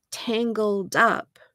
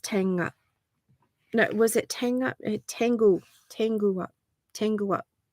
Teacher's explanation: the singer's native language doesn't have the L Sound in it